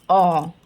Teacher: इनका जो उच्चारण होता है वो आ और ओ के बीच की ध्वनि होती है, आ और ओ के बीच की ध्वनि होती है, इसको बोलते हैं हम आगत ध्वनि।